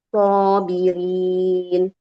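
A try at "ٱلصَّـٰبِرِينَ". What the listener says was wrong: Lebih alirkan Ibu suara di huruf shadnya. Wa ya'lamas sabirin.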